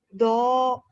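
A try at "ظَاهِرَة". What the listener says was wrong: zo agak pecah. Zo bukan do ya, zo.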